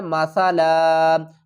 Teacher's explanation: جب ہم دو زبر پر وقف کریں گے تو ایک زبر کو ڈراپ کر دیں گے اور اس کے ساتھ الف کو ملا لیں گے